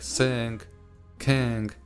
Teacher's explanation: technically this sound is referred to as the voiced velar nasal